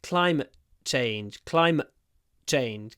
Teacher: When I say climate change, I use a glottal stop because I have the t in climate before a consonant.